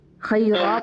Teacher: جیسے آگے نون کتنی کا قاعدہ خیرن الوصیہ، ہم اس کو نون کو پڑھ رہے ہیں، ورنہ اگر ہم پڑھیں خیر تو ہم صرف خیر پڑھیں گے، خیرا پڑھیں گے، کیونکہ را کے اوپر 2 زبر ہے، خیرا پڑھیں گے، نون کو ہم ڈراپ کر دیں گے، لیکن ہم آگے ملا کر پڑھیں گے تو یہ نون پڑھنا ہمارے لیے لازم ہوگا۔